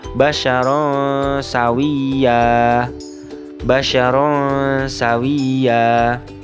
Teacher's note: fathah tanwin yang terdapat pada huruf ro bertemu dengan huruf saa sehingganya fathah tanwinnya dibaca dengan cara samar